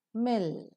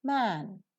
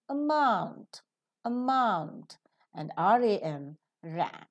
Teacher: the upper lip and the lower lip make a firm contact so that a complete closure of the oral cavity is observed